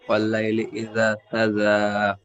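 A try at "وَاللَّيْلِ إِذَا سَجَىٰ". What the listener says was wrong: ইজা, জালটি একালি টান হবে, টান ছেড়ে যাচ্ছে। ওয়াল্লাইলি ইজা সাজা।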